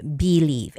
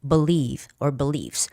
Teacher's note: the stress goes on the second syllable, beliefs